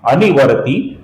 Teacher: इसमें नी ह्रस्व है और ये ती है, ये दीर्घ है